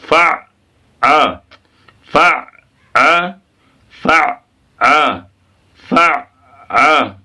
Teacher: ایک دم اسٹاپ روک دیں گے حلق میں لے جا کر